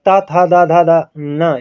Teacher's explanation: त का उच्चारण करते समय आपकी जीवा दांत पर लगेगी इसलिए यह दंत व्यंजन के अंतर्गत आएगा किसमें दंत व्यंजन के